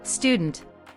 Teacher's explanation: No vowel sound at the very beginning of the word, schwa on the weak syllable.